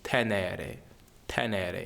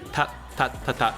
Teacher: they do a dental T their Ts are put um kind of right behind the teeth on the hard palate and it's- it doesn't explode as much